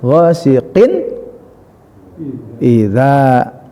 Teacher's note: jelas n-nya 1, jelas tidak berdengung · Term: izhar